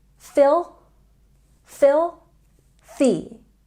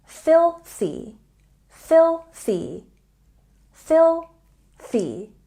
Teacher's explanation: We have a stress on the first syllable and we have TH. Don't forget with TH to put your tongue between your teeth.